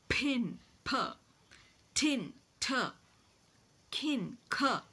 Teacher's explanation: the audible puff of air that is released is called as an aspiration · voice sounds they're all plosives so for all this you have there's a closure complete closure and then there's a sudden release of air · an aspiration so sounds like pin p tin t kin C they're all voiceless sounds they are all plosives